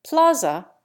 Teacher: Plaza has 2 flat A's